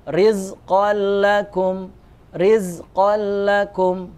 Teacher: kalau ini dia tidak dibaca dengung. Karena dia hanya lebur saja, maka tidak perlu juga ditahan. Rizqan lakum.